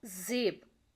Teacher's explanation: Alveolar, tongue against the alveolar ridge